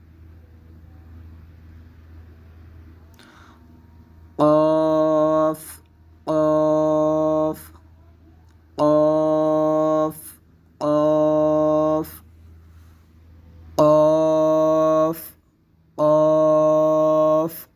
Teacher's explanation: اب دیکھیں ان دونوں حروف کو 2 2.5 الف کی مقدار لمبا کیا جائے گا، اور یہ دونوں حروف قاف، قاف حروف مستعلیہ کی ہونے کی وجہ سے پر پڑے جائیں گے، اور دونوں کا مخرج زبان کی جڑ اور تالو کا نرم حصہ ہے۔